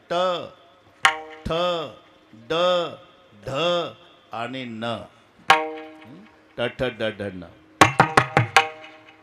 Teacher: वरच्या टाळूला जीभ लागल्याशिवाय उच्चार होत नाही. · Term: तालव्य